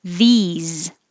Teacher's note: the s is now a z and the vowel is a e like he